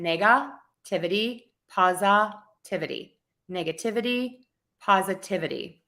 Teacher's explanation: So we have two schwas in there.